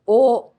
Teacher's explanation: Notice that O is a single pure sound O. This is different from English.